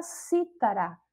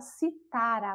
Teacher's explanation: quando ela perde aí a sílaba tônica do si, né? Passa para outra sílaba, no caso aí para o tá, e ela passa a ser paroxítona